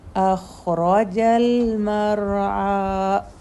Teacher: والذی خو اور رو دونوں ہیوی ہیں